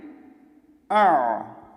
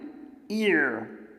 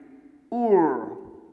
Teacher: حمزہ زبر عین، آ، حمزہ زیر عین، ایر، حمزہ پیش عین، اور۔ پہلے حمزہ کا ساؤنڈ نکلے گا، آواز نکلے گی، اور ساتھ ہی ایک لطیف سی نرم سی آواز عین کی نکلے گی